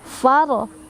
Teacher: Di sana ada ro yang dibaca secara tafkhim karena ada ro sukun yang sebelumnya ada huruf berbaris fathah.